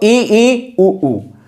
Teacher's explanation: संवृत स्वर कौन कौन से होंगे, तो ई उ, जिसमें आप कह सकते हैं मुख बंद होगा